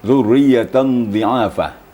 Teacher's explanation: fathatin atau nun mati itu bertemu dengan dad jadi mengarah ya mengarah disamarkan ke dalam dad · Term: Ikfa kakiki